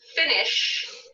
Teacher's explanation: finish, ends with a sound sh. Now this is a buzzing sound, sometimes called a sibilant in pronunciation.